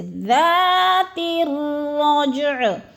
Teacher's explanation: اکثر اس طرح بھی مسٹیک کر جاتے ہیں، رجع پڑھ جاتے ہیں، رجع بھی نہیں پڑھنا، رجع یعنی دونوں کو جیم کو بھی اور عین کو بھی ساکن کرنا ہے، اور رج جیم پہ قلقلہ بھی کرنا ہے، یعنی ہلا کے پڑھنا ہے، کیونکہ جیم ساکن ہے اور حروف قلقلہ میں سے ہے